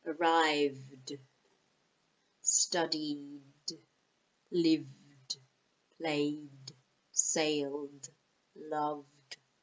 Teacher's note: it's a softer sound, okay, because arrive ends with a sound with a voice